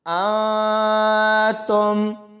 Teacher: نون ساکن ہے اور آگے تا ہے تو یہاں پر اخفا ہوگا، یعنی نون کی آواز کو چھپا کر پڑھا جائے گا